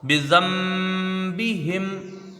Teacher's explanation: زال کو نون سے ملائیں گے، یہاں نون ساکن کے بعد با ہے تو یہاں اقلاب ہوگا، نون ساکن کو میم سے بدل کر غنہ کے ساتھ پڑھا جائے گا. باقی نیچے زیر جلدی پڑھیں گے، ہا کو میم سے ملا کر ملائیں گے، یہاں پر بھی جلدی پڑھیں گے، بذنبہم.